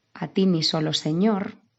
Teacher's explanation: es aguda porque el golpe fuerte de la palabra va en ñor